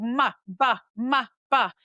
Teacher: And so you go mb-m. Those are both bilabial sounds.